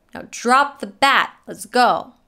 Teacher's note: the most stressed words are now bat and go